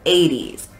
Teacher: even though it is spelled with a t we say it like it's a d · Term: d sound